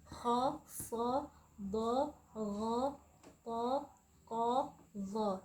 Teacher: ketika kita membaca huruf kha, maka pangkal lidah kita tuh naik ke langit-langit. Yang lidah kita setara, jadi naik dia ya, naik ke langit-langit. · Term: isti'ala